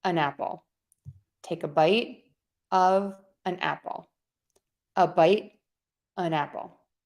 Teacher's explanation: I'm going to link that and say an apple, making that vowel super short in the article.